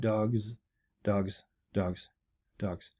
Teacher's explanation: because the g is voiced, we're going to voice the z at the end of that.